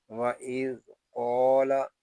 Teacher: ذال کو نرمی کے ساتھ ادا کریں گے، ذال ساکن ہے، اس کو سکون کے ساتھ پڑھیں گے۔